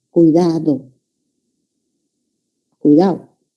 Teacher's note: en el habla rápida no se pronuncia la D entre vocales.